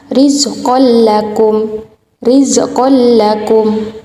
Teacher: Idgham bila gunnah adalah nun atau tanwin yang bertemu dengan huruf lam dan ro. Cara membacanya adalah dengan meleburkan nun sukun ke huruf berikutnya tanpa gunnah